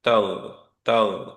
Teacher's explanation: তো তাগ, তাগ, এরকম হবে না, হ্যাঁ, যে বাতাস বেরোবে না, তাগ, তাগ, ওই জায়গায় সাউন্ডটা ধরে থাকবে অ্যান্ড ওইখানে সাউন্ড ইয়াটা বাতাসটা ওইখানেই থাকবে, বাতাসটাও কন্টেইন থাকবে, বাতাসটা বাইরে বেরোবে না